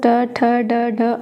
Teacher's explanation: ट वर्ग का उच्चारण स्थान पूछा जाए तो मूर्धन्य बताएंगे